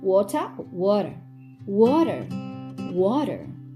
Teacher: the T sound in water isn't fully pronounced instead it makes a sound similar to D